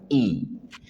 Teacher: Ada huruf hamzah yang keluar dari pangkal tenggorokan I. Ketika kita mengutkan I, pastikan rahang turun.